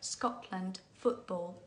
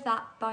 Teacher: glottal T is the first feature that makes it difficult to understand. It happens before consonants, typically.